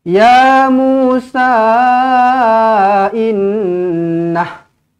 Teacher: Kalau nak berhenti pada mad silah, tetap kena berhenti dengan pendek sahaja.